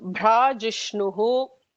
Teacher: Bhrajishnu, the first one is a Mahaprana Bha. So Bhrajishnuhu.